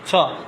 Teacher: ছ বলো, বেশি বেরোবে। ছ, দেখো তোমার হাতে বাতাসটা আসে লাগতেছে, এই রকম যেগুলো হবে সেগুলো হচ্ছে মহাপ্রাণ ধ্বনি